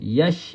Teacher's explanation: Ya dengan shin ni makhraj yang sama tengah lidah. Ya, bukaan mulut kita bersama.